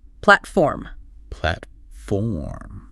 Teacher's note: platform has two syllables with the stress on the first